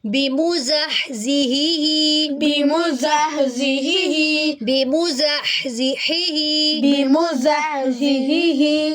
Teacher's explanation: हा को हलक से अदा करेंगे यह भी हलग से अदा किया जाएगा। लेकिन इन दोनों हा · گے یہ بھی ہا حلق سے ادا کیا جائے گا لیکن ان دونوں ہا میں کیا ڈفرینس ہے کہ ان دونوں کے مخرج الگ ہیں اور ایک حرکت جو ہے وہ جلدی پڑی جائے گی اور دوسری کی حرکت کو لمبا کریں گے